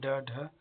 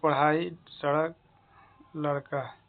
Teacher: जिह्वा ऊपर उठकर झटके के साथ शीघ्रता से नीचे आती है, अतः उन्हें हम उत्क्षिप्त व्यंजन कहते हैं।